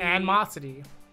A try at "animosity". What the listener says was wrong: You're missing a syllable. yeah, you're missing a syllable.